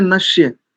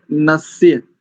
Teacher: दोनों में, इस शब्द में भी और अगले शब्द में भी, दोनों में दंत्य सकार है।